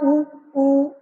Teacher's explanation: जैसे आप उ, ओ, तो हमारे जो ओष्ठ होते हैं इनके गोल होते हैं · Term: वृत्ताकार